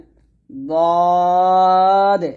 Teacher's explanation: দদ হচ্ছে জিহ্বার গোড়ার কিনারা উপরের মাঝদাতের গোড়ার সঙ্গে লাগিয়ে দদ মোটা উচ্চারণ করতে হবে।